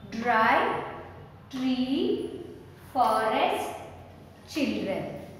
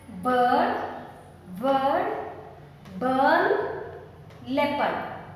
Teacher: In first set of words, the R sound we can hear. The sound of the R we can hear. But here in the second set of words, the R, the pronunciation of R is not there. Not there means we don't pronounce R here.